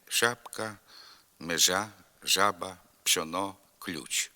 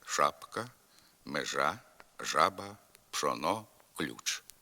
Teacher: У деяких говорах південно-західної діалектної групи зокрема у покуцьських бойківських гуцульських шиплячі звуки пом'якшуються